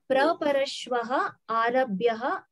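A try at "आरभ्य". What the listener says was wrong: Arabhyaha na atra visarga nasti arabhya.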